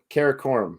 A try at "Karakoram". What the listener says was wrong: I just say Karakoram. Karakoram. It's just a ka rather than ke. Like you say Karakoram, so maybe Karakoram.